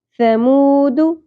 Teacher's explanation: مو، مد اصلی ہے، ایک الف کے برابر کھینچیں گے